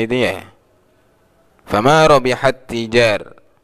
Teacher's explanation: Masuk manjing ke tak yang kedua. Tak pertama tidak terbaca, tak kedua langsung sifatnya tasdid. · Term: mutajanisan